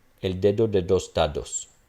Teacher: As opposed to the English phonology, all of these would be stops and they wouldn't even be dental, they would be alveolar.